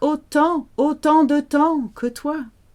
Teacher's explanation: So time is pronounced weirdly. You can't hear the M or the P or the S. It sounds like autant de temps que toi.